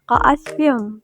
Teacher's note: karena tanwin kasrah bertemu huruf mim dilebur dengan dengung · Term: idgham biguna